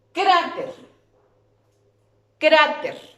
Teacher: La sílaba tónica es cra.